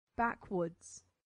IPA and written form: ˈbækwʊdz (backwoods)